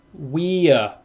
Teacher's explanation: you say we plus a schwa, we're. But when you say it quickly, we're.